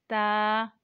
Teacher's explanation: ता जुबान की नोक और ऊपर की दांतों की जड़ से अदा होता है